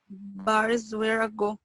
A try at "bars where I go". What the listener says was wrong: يعني انت قلتي I go بس الساوند كنت حاسه مكسر. لا انا عايز الفلو كله يبقى ماشي كأنه كلمة واحدة. وخلي بالك مش بالسرعة. انت ممكن تقولي بسرعة وتطلع غلط وممكن تقولي بالراحة وتطلع صح.